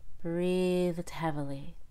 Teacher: I let out a little D before the H in heavily